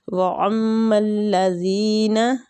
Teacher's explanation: میم مشدد ہے، میم پہ غنہ کریں گے، زال جو ہے یہ نرمی والا حروف ہے، یا لین کے ساتھ اس کو پڑھنا ہے، یا مد کے ساتھ۔